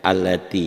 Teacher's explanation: Bukan ya-nya yang panjang, ti-nya. Karena ya hurufnya fungsinya sebagai huruf pembantu pemanjang. Taknya asalnya satu ketukan menjadi dua ketukan gitu.